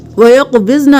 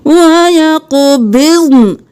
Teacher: نون کی صرف آواز آئے گی، نون ساکن ہو جائے گا۔